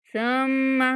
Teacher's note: सुम्मा मीम पर गुन्ना करना है।